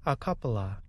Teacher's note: of is one of those expressions native speakers usually say quickly instead of saying of we just say uh because it's quicker